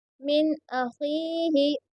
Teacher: یہاں پر اظہار ہو رہا ہے کیونکہ نون ساکن کے بعد میں حمزہ آیا ہے، اس لیے یہاں پر اظہار ہو رہا ہے، اور اسی لیے اسے جلدی پڑھیں گے